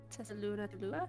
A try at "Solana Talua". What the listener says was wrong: The T is silent.